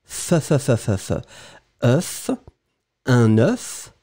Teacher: Souvenez-vous que c'est un mot un petit peu bizarre parce que le singulier, vous allez prononcer « œuf » et vous prononcez vraiment le « f » final.